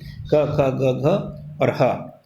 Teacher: क ख ग घ और ह, इनका उच्चारण स्थान कंठ है